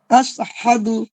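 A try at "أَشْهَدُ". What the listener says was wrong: আশ আশ, শিন জিহ্বার মাঝখানে শক্ত করেন। দু ধরে রাখা যাবে না। তো যে হরকতে কোনো জায়গায় টান হবে, টানা যাবে না।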